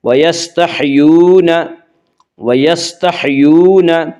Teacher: یا مدہ کو 1 الف کے برابر کھینچ کر پڑھیں گے